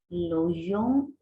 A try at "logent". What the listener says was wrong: Attention, on ne prononce jamais ENT à la fin.